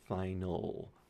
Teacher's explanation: So this is a dark L, final. You can feel your tongue in the back going up just a little bit